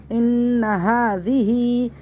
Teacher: نون مشدد کو غنّے کے ساتھ پڑھنا ہے. ناک میں آواز چھپا کے پڑھنا ہے. اس کو ہا پڑھنا ہے, ہا نہیں پڑھنا ہے.